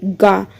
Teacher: ग जो हमारा अल्प प्राण ठीक है क्योंकि इसको बोलने में ज्यादा मेहनत की जरूरत नहीं पड़ती